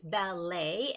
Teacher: you do not make that T sound. It's a silent T.